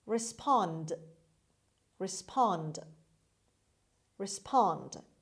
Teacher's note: the stress is on the second syllable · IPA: /rɪˈspɑːnd/